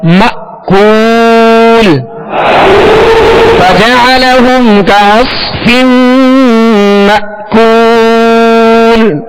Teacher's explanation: ترميهم بحجارة من سجيل ترميهم بحجارة من سجيل فجعلهم كعصف مأكول فجعلهم كعصف مأكول مأکول یہاں حمزہ ساکنہ ہے اور ہم نے سبق نمبر 11 میں پڑھا تھا اس کی مشق میں حمزہ ساکنہ میں جھٹکا دینا ہے واضح